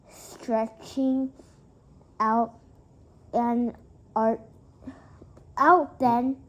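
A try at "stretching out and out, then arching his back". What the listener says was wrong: No, out, comma, pause. Then arching his back.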